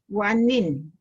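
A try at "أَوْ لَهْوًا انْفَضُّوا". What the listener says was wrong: Tapi mesti dengung. Sebab dia jumpa fa tu dia dah jadi ikhfa.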